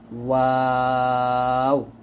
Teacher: 2 ঠোঁট গোল করে সামান্য খোলা রেখে একটি হরফ উচ্চারিত হয়